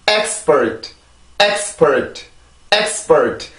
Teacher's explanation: 성대 긴장이 돼야 되죠. 강세가 있으니까. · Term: 리듬